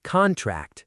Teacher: Stress on the first syllable, noun